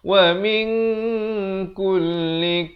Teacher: Nun mati yang tak ada tanda mati bertemu kaf. Jadi samarkan bacaannya. Itu maksud ikhfa. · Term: ikhfa hakiki